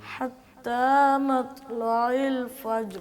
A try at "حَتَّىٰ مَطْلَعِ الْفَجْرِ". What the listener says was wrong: طا پہ قلقلہ کرنا ہے، اور طا کافی موٹا بھی ہے اور اس کا قلقلہ بھی ہوگا. حتی مطلع الفجر. مت تو نہیں ہوگا، قلقلے کا مطلب یہ ہوتا ہے کہ اس کو آپ نے ہلانا ہے زبان کو، اس کو زیادہ زبان کو واپس لے کے آئیے گا تیزی سے. ہونٹوں کو گول نہ کریں طا بولتے وقت نا.